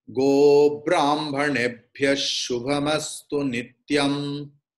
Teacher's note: that Visargas will be changed into Shakara because Shubha is there.